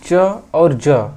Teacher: ये च वर्ग के जो वर्ण हैं ये तालु से बोले जाते हैं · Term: तालव्य व्यंजन